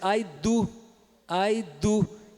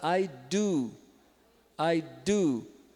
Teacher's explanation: o d do inglês é um pouquinho mais para trás